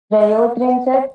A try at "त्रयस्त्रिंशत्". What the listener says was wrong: त्रयः भवति, अत्र उकारः न भवति, त्रयस्त्रिंशत्